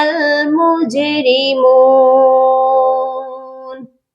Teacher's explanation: جیم ساکن ہے، یہاں پر بھی ہم جیم پر قلقلہ کریں گے